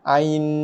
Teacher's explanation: Bukan panjang pada nun, panjang pada a tu. Ai itu panjang.